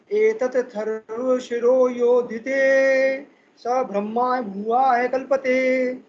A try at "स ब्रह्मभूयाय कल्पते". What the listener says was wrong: ब्रह्मा की जगह ब्रह्म बोलेंगे, ब्रह्म भूयाय। एतदथर्वशिरो योधीते स ब्रह्म भूयाय कल्पते। स ब्रह्म भूयाय कल्पते।